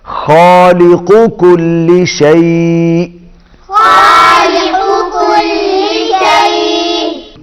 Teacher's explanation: پہلا قاف موٹا ہے اور دوسرا کاف باریک ہے